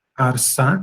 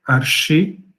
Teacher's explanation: O S, quando foi acrescentado um I, depois o S se palataliza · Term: palatalização